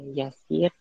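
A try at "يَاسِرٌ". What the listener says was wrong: Yasirun. Ini dalam pelajaran ya kita menyebutkan seperti ini. Aina yasirun. Tapi dalam kosakata dalam percakapan sehari-hari dia tidak dibaca harokat akhirnya. Hanya kata aina yasir, di mana Yasir?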